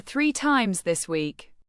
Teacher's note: stress the word three to emphasize how often pizza was ordered. This is your content word, showing the reason for concern.